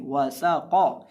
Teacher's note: वाव को हम होंठों को गोल करके पढ़ेंगे और सीन के अंदर सीटी की बात पैदा करके पढ़ेंगे और कौफ को मोटा करके पढ़ेंगे